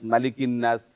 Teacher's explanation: অনেকে দেখলাম মাতে গিয়ে টানছে এখানে টানা যাবে না